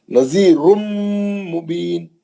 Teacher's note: ये रा मोटा पढ़ेंगे, पेश है ना